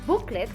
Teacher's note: the first syllable in that word is more noticeable or more outstanding than the second syllable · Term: stress